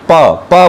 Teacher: और स्पृष्ट प्रयत्न, स्पृष्ट प्रयत्न अर्थात स्पर्श करके प्रयास होना, तो मिलाना, तो दोनों ओष्ठों को मिलाकर बोलना